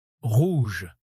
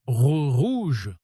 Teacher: Ce R doit partir du fond de la gorge avec un léger frottement. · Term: R français